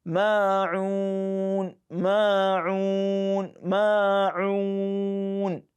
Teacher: So it is ma'un, madul asl. That is a fundamental mad, just twice.